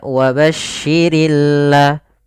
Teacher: pada lafal Al di sini ada bacaan alif lam syamsiah yaitu alif lam yang kita tulis tapi dia tidak terbaca dia sehingga langsung kepada huruf lam yang bertasydid